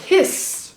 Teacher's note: hiss, which has got that beautiful sibilant ending